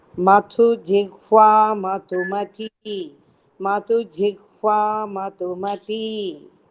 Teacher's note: Both dhas are Mahapranas and you have to give stress for both dhas.